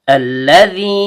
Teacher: Lam ujung lidah bertemu dengan langit-langit bagian depan. Dal ujung lidah bertemu dengan ujung gigi seri atas.